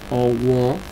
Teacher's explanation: Observen que estoy bajando la entonación al final de owo. Y las o estas son con punto de bajo, por lo tanto son vocales abiertas.